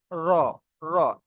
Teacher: জিভের মাথাটা একটু বেঁকে যাচ্ছে, র, র। হ্যাঁ, র, জিভের মাথাটা একটু বেঁকে গিয়ে নিচের সাইডটা গিয়ে উপরে তালুর সাথে লাগছে, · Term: রর মাখরাজ